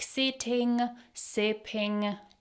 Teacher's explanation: He didn't pronounce the ng sound at the end of the words